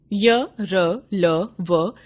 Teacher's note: अंतस्थ व्यंजनों का उच्चारण करते समय मुख का कोई अंग दूसरे अंग का पूरी तरह स्पर्श नहीं करता, अर्थात इनका उच्चारण स्वरों और व्यंजनों के बीच की स्थिति में होता है, इसलिए इन्हें अंतस्थ व्यंजन कहते हैं।